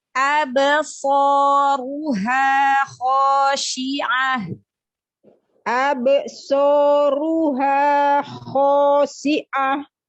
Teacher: Ba sukunnya huruf qalqalahnya jangan ada hamzah, jangan terputus dengan setelahnya, tapi dialirkan.